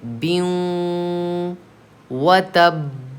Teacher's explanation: या वाऊ मीम नून में से वाऊ देखिए दूसरे कलमे में आ रहा है, तो यहाँ पे गुन्ना के साथ मिलाकर पढ़ना चाहिए. गुन्ना की मिक़दार 1 अलिफ़ के बराबर है, तो हम गुन्ना करेंगे · वाऊ देखिए दूसरे कलमे में आ रहा है, तो यहाँ पे गुन्ना के साथ मिलाकर पढ़ना चाहिए. गुन्ना की मिक़दार 1 अलिफ़ के बराबर है, तो हम गुन्ना करेंगे बियूं व तब.